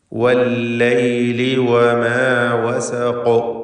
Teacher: ശബ്ദം വ്യക്തമാക്കി ഹറക്കത്ത് പോലെ ചലിപ്പിച്ച് ഖാഫിന് തഫ്ഖീം നൽകി തടിപ്പിച്ചുകൊണ്ട് വഖഫ് ചെയ്യുക.